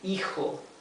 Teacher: So here the H is totally mute.